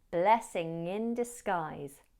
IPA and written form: ˈblɛsɪŋ ɪn dɪsˈɡaɪz (blessing in disguise)